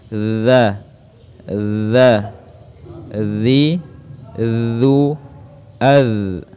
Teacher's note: ujung lidah disentuhkan di ujung gigi depan bagian atas dengan sedikit getaran dan suara yang mengalir. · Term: huruf dha